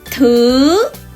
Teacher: Number 2, when pronounce the vowel please stretch your mouth to both sides. Number 3, don't forget to raise the voice gradually. Very important, gradually.